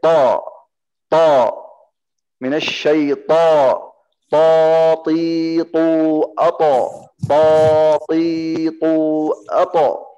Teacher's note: Tidak ada keluar nafas. Tidak ada keluar udara. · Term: Huruf ta